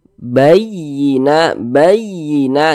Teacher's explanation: penekanan ya pada huruf-huruf tertentu sehingga intonasi suaranya itu dia sedikit lebih tinggi dibandingkan dengan huruf-huruf di sampingnya begitu Jadi ditekan bayyina bayyina gitu bayina ditekan seperti itu bayina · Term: naber